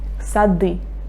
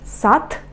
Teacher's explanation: I pronounce d very clear because now d is not the final one.